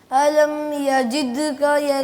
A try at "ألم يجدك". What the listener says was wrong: جد د زور سے نہیں کرنا, ذرا نرمی اختیار کریں. قلقلہ پراپر کریں. یجید یجید کا